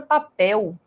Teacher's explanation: quando você utiliza o l como vogal ele tem som de u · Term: semivogal